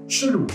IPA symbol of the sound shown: ʃlu